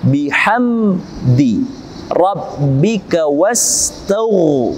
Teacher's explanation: hukum tajwidnya adalah Ilham syafawi harus dibaca dengan jelas Ilham syafawi mim Ini bibir bibirnya harus terkatup dengan sempurna